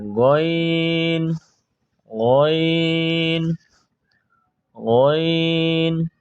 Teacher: গইনের মাখরাজ হইল 3 নম্বর মাখরাজ হলকের শেষ ভাগ হইতে গইন